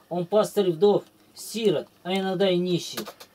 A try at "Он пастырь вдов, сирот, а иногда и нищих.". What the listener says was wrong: Он пастырь вдов, сирот, а иногда и нищих. Ну, ты рифму теряешь, ударение где не надо делаешь.